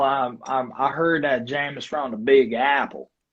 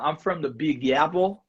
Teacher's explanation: the ah is a little bit longer than the New Yorker ah, just because you know you have the drawl of the Texas.